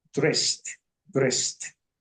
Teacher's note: Aquí tenemos una S antes de la ED. SS, entonces se convierte en T.